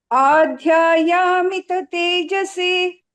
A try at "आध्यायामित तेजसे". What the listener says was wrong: Here Dhya is basically not Mahaprana, it is an Alpa Prana. Adhyayamita tejase.